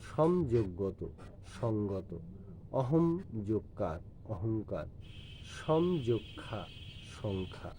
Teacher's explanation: আধুনিক বাংলায় ময়ের পরে কণ্ঠ বর্গীয় ধ্বনি থাকলে ময়ের স্থলে প্রায় উম না হয়ে অনুস্বার হয়